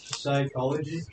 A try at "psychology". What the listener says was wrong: pronounced it wrong. You forgot the CH. It's psychology.